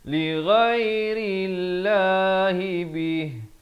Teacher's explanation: lafaz jalalah dibaca nipis. Sebelumnya datang huruf berbaris kasrah dengan 2 harakat.